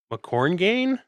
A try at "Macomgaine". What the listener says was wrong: Well, there's no R.